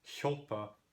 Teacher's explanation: And actually in Old Icelandic, overwhelmingly see hjálpa because the A gets further lengthened in front of an L plus a P